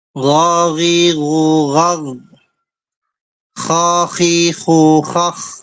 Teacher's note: Kalau ghain, kho, di tenggorokan bagian atas. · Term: adnal halq